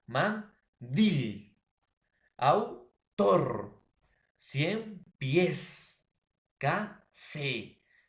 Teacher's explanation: Lleva la mayor fuerza de voz en la última sílaba. · Palabras que tienen la mayor fuerza de voz en la última sílaba. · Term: aguda, palabras agudas